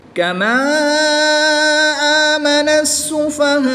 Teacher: وقف کی حالت میں حمزہ کو ساکن کر دیں گے، اور حمزہ ساکنہ کو ہمیشہ جھٹکا دے کر پڑھتے ہیں